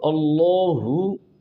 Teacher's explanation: اللہ کے لام میں دو چیزیں موٹی پڑھنی ہیں، ایک اللہ کا لام اور ایک کھڑی زبر ، اس کو آپ نے موٹا ادا کرنا ہے۔ تو اللہ